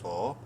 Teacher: صاد کو منہ بھر کے پڑھتے ہوئے ایک الف کے برابر لمبا کریں گے۔ صاد بولڈ لیٹرز میں سے ہے اور الف مدہ ہے۔